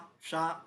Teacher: श तालु से बोला जाता है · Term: तालव्य सा